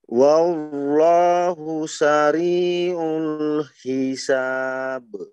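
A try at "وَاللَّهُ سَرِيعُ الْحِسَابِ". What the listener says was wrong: Masih wallahu, coba. jangan, wallah. Jangan langsung turun ke bawah ya posisi lidah. Jangan wallah, ini terus turun.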